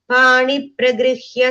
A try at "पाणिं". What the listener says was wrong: Fourth line, first word, panim im sound.